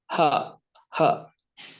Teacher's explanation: Huruf h ini tidak dikeluarkan dari dada, tapi dari aqsal halq.